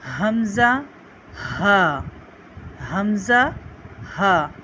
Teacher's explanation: حلق کے نیچے والے حصے سے اسے ہم ادا کرتے ہیں۔